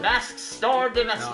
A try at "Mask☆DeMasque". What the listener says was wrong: No, it's silent. It's a silenced. It's pronounced mask.